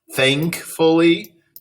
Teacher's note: that N making the NG sound before the K